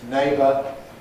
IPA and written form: ˈneɪbə (neighbo(u)r)